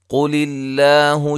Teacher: قاف کو موٹا ادا کریں گے، لفظ اللہ کا لام یہاں باریک ہوگا، اس سے پہلے زیر ہے۔